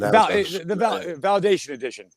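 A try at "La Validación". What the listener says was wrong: But you got to throw Spanish in there.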